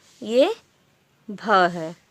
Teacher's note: हिंदी की स्पर्श, घोष, महाप्राण, ओष्ठ, व्यंजन ध्वनि है